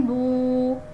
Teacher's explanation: اسے واو مدہ کہتے ہیں اور اس کو ایک الف کے برابر کھینچ کر پڑھا جاتا ہے